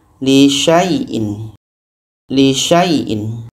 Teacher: Lisyaaiin sya bertemu ya syai dibaca pendek saja.